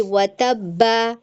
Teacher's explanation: क्योंकि बा के ऊपर तशदीद है वतब और इस फिर हमने यह भी जाना कल की क्लास में तशदीद दो लेटर से मिलकर बना होता है। एक तो बा साकिन और एक बा हरकत। उसकी वजह से यह डबल पढ़ा जाता है